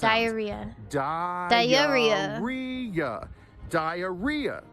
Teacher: There's four syllables and there are two hidden Y's in this word. >> Diaria. So you go up on the third syllable re. · So you go up on the third syllable re. Okay. And there's a hidden Y vowel sounds.